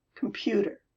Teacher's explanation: The schwa is the first vowel in computer. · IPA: /kəmpyuƫər/